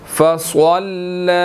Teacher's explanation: صاد موٹا ہے اور لام کے ساتھ آگے مل رہا ہے، لام کے اوپر جو ہے وہ کھڑی زبر ہے، ٹھیک ہے، اس کو ہم نے 1 سیکنڈ کھینچ کر پڑھنا ہے، ٹھیک ہے جی۔